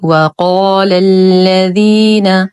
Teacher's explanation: نفخم القاف في اعلى درجات التفخيم ونخلص اللام من تفخيمها